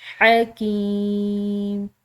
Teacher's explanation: کھنچاؤ دیا ہے، عزیز حکیم، حلق سے ادا کریں گے، حکیم، یا ساکن کی وجہ سے اس کو کھنچاؤ دیں گے